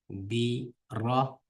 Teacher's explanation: ra bi tafxim, ya'ni qilin tum o'qiydigan harf.